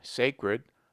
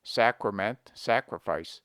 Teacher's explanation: We pronounce sacred with A long, sacred, but the derivations are properly pronounced with A short, sacrament, sacrifice.